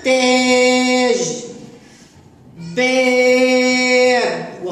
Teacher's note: المد بالالف يسمى الحرف الممدود التاء عليها فتحه وتسمى الحرف الممدود الالف يسمى المد بالالف وينطق فتحه لاعلى طويله